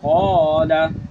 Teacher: ज़बर क़ा, लाम ज़बर ला, क़ाला, ये अलिफ से पहले ज़बर आ गई तो अलिफ को हम पुर पढ़ेंगे, यहाँ पे मोटा पढ़ा जाएगा क्योंकि रुफ़ मुस्तालिया है उससे पहले अलिफ से